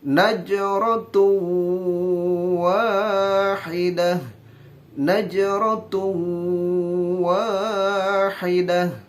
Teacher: Diidghamkan, tanwin domahnya dimasukkan ke harakat selanjutnya, yaitu waw, yang mana waw merupakan salah satu huruf idgham bigunah, maka wajib dimasukkan disertai dengan dengung.